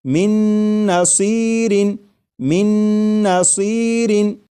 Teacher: میم کے بعد نون مشدد جو ہے اس کی آواز آئے گی اور غنہ کے ساتھ پڑھیں گے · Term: ادغام